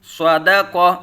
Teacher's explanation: اسی طرح صاد زبر ص، دال زبر د، صد، قاف زبر ق، صدق۔ اس میں بھی صاد حروف مستعلیہ میں سے پر پڑھا جائے گا، دال باریک پڑھا جائے گا، اور قاف حروف مستعلیہ میں سے قاف کو پر پڑھا جائے گا۔